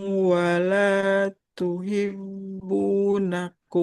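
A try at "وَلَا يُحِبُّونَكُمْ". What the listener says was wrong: Wala yuhibbu. Yang kedua dia huruf ya. Ya. Wala yuhibbunakum.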